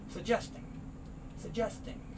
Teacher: one of the g sounds goes away